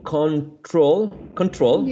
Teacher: when you say control you actually are stressing the second syllable and not the first one